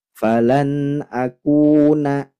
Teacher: sifatnya hams dan syiddah Jadi hamsnya cukup percikan nafas saja falan akuna tidak boleh akuna akuna ya akuna Ada dan hukumnya